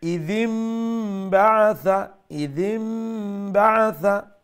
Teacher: নুনর instead নুনর জায়গাতে আমরা মিম করে লিমু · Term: একলাব